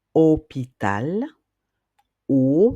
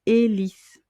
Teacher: Donc là, vous allez remarquer dans le mot hôpital, le mot haut, la hauteur de quelque chose ou une hélice, vous voyez bien que l'on n'entend pas le H comme je vous le disais en début de vidéo, hein, puisque c'est une lettre muette, une lettre sourde entre guillemets qui n'émet pas de son.